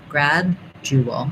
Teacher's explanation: So I can, if I go slowly, gradual, you can hear more of the D, but the D is generally unreleased. Gradual, I just release it into the J sound. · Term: stopped D